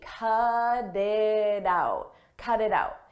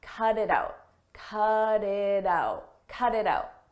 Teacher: You'll notice we have T's in between vowels. In American English, when a T comes between vowels, we change that to a d, a very soft D.